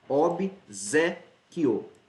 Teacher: Então, a sílaba tônica é a penúltima. Se é penúltima, é paroxítona.